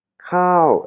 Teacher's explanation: elle a intonation courte prononciation courte et intonation haute